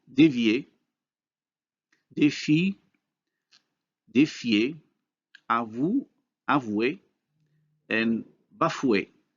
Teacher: Notice how the high vowels changes into the corresponding glide with the same features for backness and rounding.